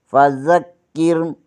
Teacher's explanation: کاف زیر کے آگے رائے ساکن ہے، یہاں پر رائے کو بریک پڑھیں گے